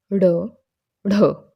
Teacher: उत्क्षिप्त व्यंजन कौन से होते हैं कि जिन व्यंजनों के उच्चारण के समय जीवा ऊपर उठकर मूर्धा को स्पर्श करके एक झटके से नीचे गिरती है, उन्हें उत्क्षिप्त व्यंजन कहा जाता है। मूर्धा क्या होता है कि जो हमारे जो ऊपर के दांत हैं, ठीक है, उनके मसूड़ों के थोड़ा पीछे, एक मैं कहती हूँ कि आधा इंच आप पीछे देखिएगा तो वहाँ पे मूर्धा का स्थान होता है।